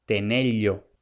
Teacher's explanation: esta elle representa la aproximante lateral palatal, de forma más exacta, elle, no elle, como digo yo que soy yeísta.